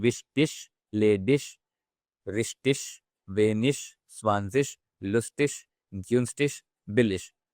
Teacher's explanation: either we can say ik or ish, but non-German speakers mostly say this ish pronunciation